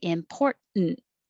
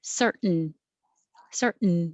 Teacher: most american english speakers will drop that middle t and just say important